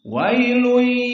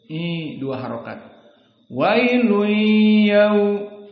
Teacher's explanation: Maka di sini tanwin bertemu dengan ya diberikan idgham dan idghamnya di sini bi gunnah karena ya yang gunnah ada 4 yanmu ya nun mim dan waw. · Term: idgham bi gunnah